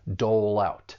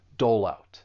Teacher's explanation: When pronouncing this phrasal verb, you should know that linking is going to occur. And we can link the final consonant sound in dole with the beginning vowel sound in out